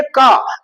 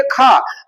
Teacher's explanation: का नहीं बोलेंगे तो हवा कम टकराएगा, जैसे ही खा बोलेंगे हवा ज्यादा टकराएगा